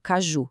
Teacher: a sílaba forte é a última, ju